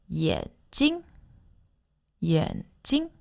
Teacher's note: that's a third tone and a neutral tone and that's the word for eyes